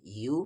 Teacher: یا پر پیش یو، اور واو ملا دیں گے، تھوڑا کھینچنا ہوگا